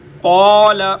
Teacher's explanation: اگر زبان کے درمیانی حصے کو اوپر تالو کے نرم حصے پر لگائیں گے تو یہ قوف ادا ہوگی